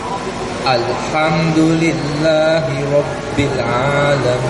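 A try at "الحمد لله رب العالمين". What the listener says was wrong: Kalau makin ada Alhamdulillahi Rabbil Alamin. Alhamdulillahi Rabbil Alamin. Itu nada lain. Tapi kita di sini normal ya. Alhamdulillah gitu ya.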